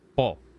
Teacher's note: it's like po with a glottal stop at the end